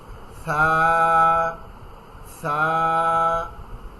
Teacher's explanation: সাটা হচ্ছে পাতলা করে একবারে জিব্বার আগা উপরের দাঁতের সাথে